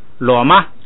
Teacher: 后边不能升，所以呢就读平声